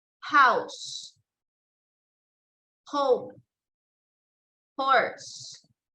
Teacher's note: And the last one is glottal fricatives, H.